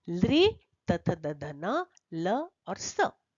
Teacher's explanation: इनका उच्चारण स्थान दंत है, इसलिए इनको कहते हैं दंत्य वर्ण